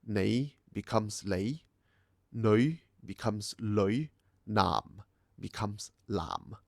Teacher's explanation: the initial N sound to L sound shifts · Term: N to L switch